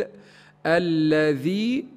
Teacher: لابد من بيان كسره الذال